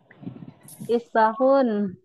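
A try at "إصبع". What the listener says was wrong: Isbahun apa isbaun? Ain apa ha? Ya, isbaun.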